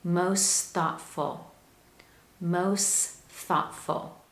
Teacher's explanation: it's much easier to transition from most to thoughtful when I delete the T sound. So we say most thoughtful, most thoughtful. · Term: linking